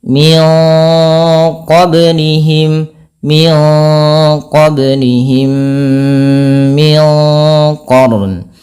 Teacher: ini harus ditahan suara mimnya karena ada pertemuan di antara dua mim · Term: idgham mimi